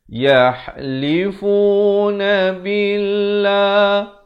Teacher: Ya dari atas bertemu ha. Ha ni di pertengahan kerongkong.